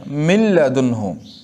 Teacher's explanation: اگرچہ لکھنے میں نون بھی باقی ہے، نون کو لکھا تو ہے لیکن پڑھا نہیں جائے گا. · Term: ادغام